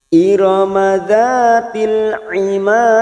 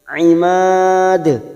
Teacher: Mad arid li sukun 4 harokat kita panjangkan karena ada mad yang bertemu huruf hidup dan dibaca waqaf, ujungnya jangan lupa dipantulkan karena ada huruf dal qalqalah kubra karena mati di akhir kalimat dan dibaca waqaf.